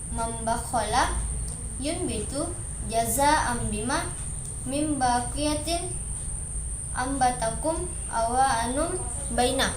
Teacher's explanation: Oleh karenanya, ketika nun mati ataupun tanwin akan bertemu dengan huruf ba, maka bibir atas dan bibir bawah tersebut posisinya tertutup dan juga diiringi dengan suara dengung kurang lebih 2 harakat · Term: iklab